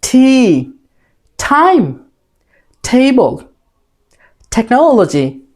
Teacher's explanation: এটা বলার সময় জিহ্বার অগ্রভাগ উপরের তালুতে টাচ করবে। জিহ্বার অগ্রভাগ উপরের তালুতে টাচ করে বলতে হবে, সজোরে বাতাস বের করে।